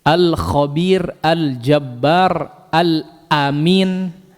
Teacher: nah ini huruf lam kemudian tempelkan kepada gusi gigi seri atas Jadi bukan Jangan sebut ujung lidah saja tapi tepi ujung lidah